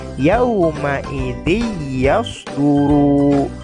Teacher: ada tanwin kasroh bertemu dengan ya, hukumnya idgham, maka bunyi tanwinnya hilang, dimasukkan ke dalam huruf ya